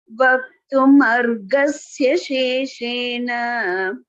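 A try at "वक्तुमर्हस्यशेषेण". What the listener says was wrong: Why are you saying ga there?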